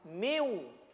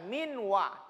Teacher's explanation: karena dia berlaku idgham, maka bunyi nun sukunnya dileburkan ke huruf waw. Miu. Terkesan hilang huruf nunnya.